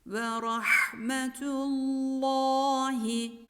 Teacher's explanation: ha harfi boğazın ortasından çıkarılır harfinin mahreci halkın yani boğazın tam ortasıdır boğazını tam ortası sıkılarak